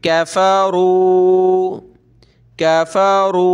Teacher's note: रा को कलरफुल किया हुआ है कि मोटा करना है, काफ पतला है